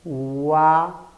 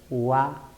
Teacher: no qué cosa el ángulo de abertura de la boca ya cuando nosotros pronunciamos primero la cerrada luego la abierta vamos a notar que el ángulo abertura va de menor a mayor abertura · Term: creciente